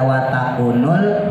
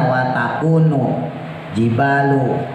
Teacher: Alif lamnya ketemu jim, makanya alif lamnya terbaca ya. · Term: alif lam qamariyah